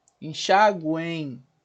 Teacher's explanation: Porque a ocorrência do M aqui vai formar, né, sonoricamente falando, um I. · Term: Tritongo